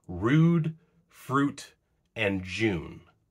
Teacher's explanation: In other cases, rather than undergoing assimilation, it undergoes a sister phenomenon called yod-dropping, where the palatal approximant is not pronounced at all